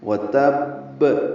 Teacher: واو کو جلدی پڑھنا ہے، تا کو با سے ملانا ہے۔ با مشدد ہے، 2 مرتبہ ادا ہوگا۔